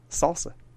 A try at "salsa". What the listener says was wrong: You put a lot of R at the end of that salsa. Yeah, that's what I heard.